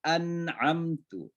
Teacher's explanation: Jadi nun mati ketemu ain, itu namanya izhar halqi. Jadi harus jelas cara penyebutan nun.